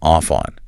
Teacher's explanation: the F in off glides directly and seamlessly into the O in on, off on. So, of hearing three distinct separate words, rub off on, your ear receives a single trisyllabic block of uninterrupted sound, rub off on.